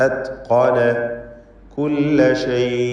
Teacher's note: ഇസ്തിഅലാഇന്റെ ഹർഫാണ്. തടിപ്പിച്ച് തഫ്ഖീം ചെയ്ത് ഉച്ചരിക്കണം ഖാഫിന്.